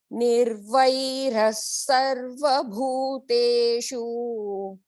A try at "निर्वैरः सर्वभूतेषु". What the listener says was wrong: That shu is short. Bhuteshu.